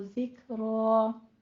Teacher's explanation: जिक्र रॉ में काफ के ऊपर हम्स करना है, थोड़ी सी सांस की आवाज देनी है। जिक्र रॉ मुफखम हो जाएगा और वही वक्फे इब्दाल करेंगे, यानी 2 फतह को हम अलिफ मद से बदल देंगे।